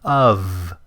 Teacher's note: It ends with a V sound, even though it's spelled with an F.